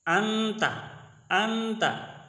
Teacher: یہ نون کو تھوڑا چھپا کر پڑھیں گے، صحیح واضح کر کے نہیں پڑھیں گے۔ انتا، انتا، تو یہ پڑھیں گے ہم انتا، انتا، آواز آدھی آواز ناک میں چھپائیں گے اور آدھی آواز منہ میں آئے گی، منہ سے آئے گی، تو یہ ہوگا اخفا۔